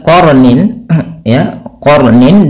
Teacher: Kemudian ketika kita melafalkan qarnin ya qarnin di sini qonnya tebal dan rnya juga dibaca dengan tebal sehingga diwarnai di sini warna biru yaitu artinya kita membacanya dengan jangan dibaca qarnin tapi dia qornin.